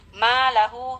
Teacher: Ma lahu ma mad tabi'i, kemudian ada ha dhamir di sana yang diapit oleh dua huruf hidup dan tidak bertemu dengan hamzah setelahnya, maka hukumnya mad silah qasirah, kita baca dengan kadar panjang 2 ketukan atau 2 harkat